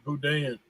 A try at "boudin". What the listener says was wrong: But you gotta leave the N though. You gotta leave the N off. The N is silent.